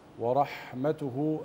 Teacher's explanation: أبين همس الحاء وصلة الصغرى تحت الهاء